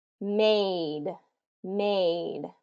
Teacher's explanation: the two vowel or there's a consonant between the two vowels that first vowel is still going to get its full long pronunciation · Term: long vowel